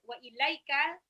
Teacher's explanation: Kecuali ini ada wa ilaika, itu ada sifat lin, lamnya harokat fathah bertemu ya sukun